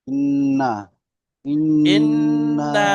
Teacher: এই নাটার তিন আলিফ টান হবে